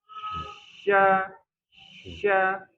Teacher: jadi dia ada udara yang menyebar di rongga mulut kuat sekali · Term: sifat tafasyi